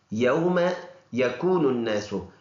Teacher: یہ کاف باریک والا کاف ہے، واو مدہ ایک الف کے برابر لمبا ادا کرنا ہے، اور نون کو ملا کر پڑھیں گے، نن نن۔